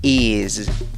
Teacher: aunque se escribe con una S, se pronuncia con una Z.